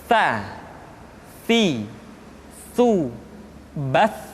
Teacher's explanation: ujung lidah disentuhkan dengan dinding dua gigi seri bagian atas.